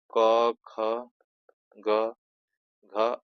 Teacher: क वर्ग जो होता है एक कंठ से होता है